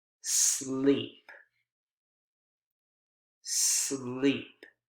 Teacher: sleep has an initial consonant cluster right two consonant sounds s sound and l sound